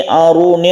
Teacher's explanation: aruni roknya tebal karena roknya itu dhammah, kita baca tafkhim